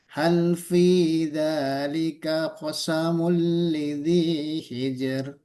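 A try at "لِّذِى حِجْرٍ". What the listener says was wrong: Jangan hijr, jangan hijr. Jangan hijr, bukan Lidi hijr. Jadi jernya nggak usah dimantengin, dimantepin hijr, jangan hijr. Jadi roknya tipis saja.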